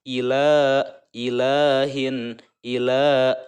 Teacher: Ila, i beda dengan la. Ila, i pendek, la itu 2 harokat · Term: mad tobi'i